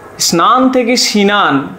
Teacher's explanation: আমরা আরেকবার বলে দিচ্ছি না স্নান এই শব্দে যে যুক্ত ব্যঞ্জনটি ছিল সেই যুক্ত ব্যঞ্জন আমরা যখন পরবর্তীতে স্নান থেকে সিনান হয়েছে তখন সেখানে এই যুক্ত ব্যঞ্জনের মাঝে একটি স্বরধ্বনি এসেছে, অর্থাৎ যুক্ত ব্যঞ্জন ভেঙে দেওয়া হয়েছে এবং মাঝে এই স্বরধ্বনি এসেছে। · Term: স্বরভক্তি